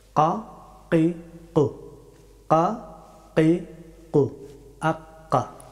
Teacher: কাফ হরফটি উচ্চারিত হয় একেবারে জিহ্বার একেবারে শেষের অংশ থেকে এবং উপরের তালু, এখান থেকে ছোট জিহ্বার কাছ থেকে কাফ হরফটি উচ্চারিত হয়।